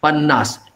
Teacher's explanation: You are saying panna, that last syllable has to be audible.